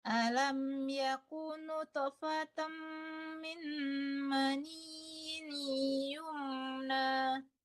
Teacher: mani bukan mani nunnya tidak tasdid ya